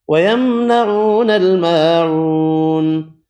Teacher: واو مدہ الف مدہ واو مدہ ایک ایک الف کی مقدار میں کھینچ کر پڑھیں